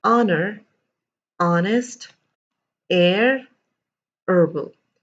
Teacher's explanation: There was no H sound at all whatsoever. It was the O sound that I started with. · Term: completely mute